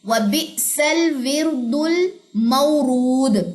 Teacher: last پہ آپ نے کلکلا بھی کرنا ہے